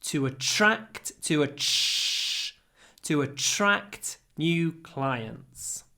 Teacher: when we pronounce TR it becomes like a CH